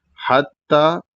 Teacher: उसके बाद ता मुशद्ददा है। जो कि पतला पढ़ा जाएगा और ता के ऊपर खड़ा ज़बर है।